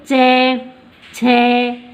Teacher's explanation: तो अपनी जिह्वा है वो ऊपर तालु के स्पर्श से कर रही है।